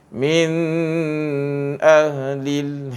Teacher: Dia dibaca jelas tanpa dengung. Dua-dua ni mim mati, mim mati dan juga nun ni dia ada persamaan sifat.